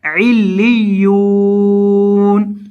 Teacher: وقف کی حالت میں نون کو ساکن کر دیں گے